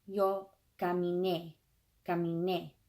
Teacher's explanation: One of the defining features of preterite versus present is that many of the forms of preterite, several of the preterite forms, they have the emphasis on the last syllable. And that's not usual for Spanish, but that's the way it is in preterite.